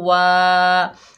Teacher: वाव के ऊपर ज़बर, आगे अलिफ खाली है, ये अलिफ मद्दा है, एक अलिफ की मिकदार खींच कर पढ़ेंगे